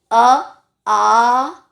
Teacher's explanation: ना तो लिप्स टकरा रहे हैं ना वो टकरा रहा है आपका मूर्धा और तालु, कुछ नहीं, गले का ही सारा काम है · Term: कंठ